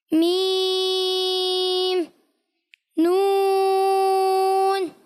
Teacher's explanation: اچھا آپ کو ایک چیز کا اور خاص خیال رکھنا ہے کہ بس جب یہ ناک والے حروف ہوتے ہیں نا, یعنی نون میں ناک میں آواز جاتی ہے, میم میں بھی جاتی ہے